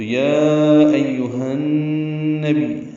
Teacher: یا ایھا النبی نون مشدد پہ غنہ ہوگا، با کو یا سے ملائیں گے، یا کو جلدی اور معروف طریقے سے ادا کریں گے.